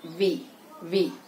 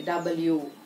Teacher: వి pronounce చేస్తున్నప్పుడు upper teeth lower lip వచ్చి touch చేస్తుంది. వి వి. అదే డబ్ల్యూ ప్రొనౌన్స్ చేస్తున్నప్పుడు రెండు లిప్స్ ఇలా రౌండ్ గా వస్తాయి.